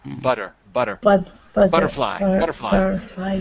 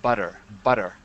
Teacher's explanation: in American English, the T's become D's like butter